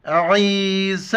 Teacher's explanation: عین کو گلے سے ادا کر کے یا کے ساتھ ملائیں گے اور سین کو با کے ساتھ، بیچ میں یا ہے اور الف نہیں پڑھا جاتا ہے.